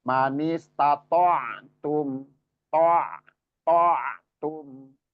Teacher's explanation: itu ain ketika disukun, nah, sifatnya bainiyah atau at-tawassut. Jadi setengah mengalir.